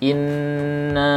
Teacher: ketika dipanjangkan inna, ada suara dengung di hidung kita. Nah, ini mesti dihindari.